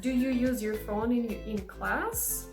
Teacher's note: if you have yes or no question the tone of your voice will go up so you will use rising intonation